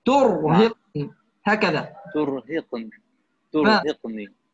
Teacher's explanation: ما بدنا نكرر حرف الراء، بدنا يعني نضربه مرة واحدة فقط